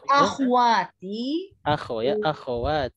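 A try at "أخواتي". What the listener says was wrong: Akhwati. Kho-nya hidup. Fathah ya.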